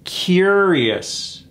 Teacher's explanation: curious that OU is gone it's just three syllables cure is emphasis on that first syllable